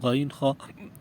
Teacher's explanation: یہ تصویر دیکھ لیجئے. سب سے اوپر والا حصہ ادنا حلق کہلاتا ہے جو زبان کی جڑ کے ساتھ ہے، اس سے غین خا ادا ہوتے ہیں